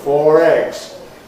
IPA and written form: ˈfɔːr ˈegz (four eggs)